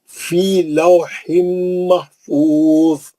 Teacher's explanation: ज़ोए पे दो ज़ेर हटा के साकिन करके रोक देंगे, मुस्तालिया का है, मोटा पढ़ेंगे, वो खलखला नहीं होता उसमें, वो खलखले का हर्फ नहीं है।